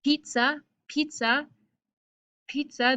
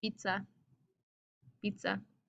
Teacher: if i say in um in english pizza pizza pizza there's like air that comes out of my mouth but if i say it in espanol pizza pizza there's like no air that comes out · when you pronounce the P and T in English, a puff of air comes out of your mouth. In Spanish, there's no puff of air.